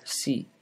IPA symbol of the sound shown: s